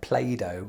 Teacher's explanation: you do it in the american way where the t becomes a d and it sounds like play-doh yeah yeah what kids play with